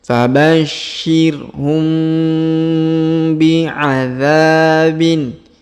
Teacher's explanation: Huruf mim sukun bertemu ba atau bi di sini. Perhatikan ada warna hijau. Artinya caranya dibaca dengung dan samar ya. Didengungkan dan disamarkan.